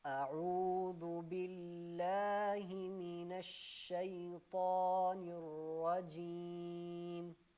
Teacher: سب سے پہلے یہ کہ حمزہ کو جھٹکا دے کے پڑھنا ہے،